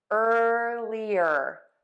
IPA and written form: ˈɜrliər (earlier)